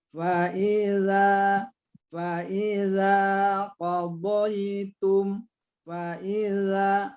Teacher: lembut sekali zalnya. Kalau agak keras kita bacanya nanti dia bergeser kepada zai